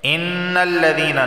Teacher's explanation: نون پر تشدید ہے، غنہ ہوگا۔